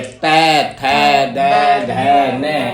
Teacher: और ये तैवर्ग दांतों की तरफ जीभ आती है। त थ द ध न, दंत।